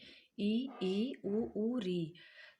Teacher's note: जिन स्वरों के उच्चारण में मुख सबसे कम खुलता है अर्थात लगभग बंद रहता है वह समृत स्वर होता है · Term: समृद्ध स्वर